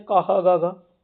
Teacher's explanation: जो का वर्ग है उनका उच्चारण स्थान कंठ से होता है